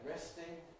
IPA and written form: ˈrestɪŋ (resting)